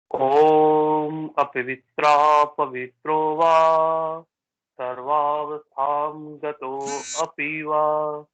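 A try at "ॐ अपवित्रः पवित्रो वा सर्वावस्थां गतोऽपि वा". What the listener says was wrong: अब वहां पर गतो अपी बोलने की जरूरत नहीं है, गतो पिवा। आपको गतो को खींचना है, मतलब मैंने कहा था वहां पे कि जो लघु गुरु जैसे जो लोग पढ़ते हैं, संगीत पढ़ते हैं, उन्होंने देखे हैं ये वर्ड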